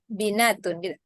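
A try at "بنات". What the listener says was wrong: Bukan binat, banat.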